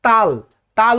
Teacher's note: তাল উচ্চারণ করতে গেলেও দুই ঠোঁট মিলিত হচ্ছে না